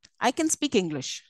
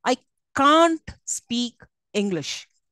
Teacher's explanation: can't is stressed here so it becomes strong when it's a negative